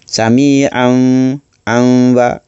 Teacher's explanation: Seakan kita nak masukkan huruf mim tu ke dalam huruf ba. Yang ni hukum ni terjadi kerana baris 2 di atas bertemu dengan huruf ba. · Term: iqlab